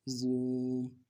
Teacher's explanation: واو مدہ، ایک الف مقدار میں کھینچنا ہے۔